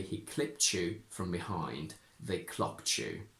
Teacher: Now, this is a personal observation that I've made, and it may not be 100% true or accurate, but I think that if t is preceded by a consonant, I think that I personally say ch a little bit more. So I would say he clipped you from behind, they clocked you.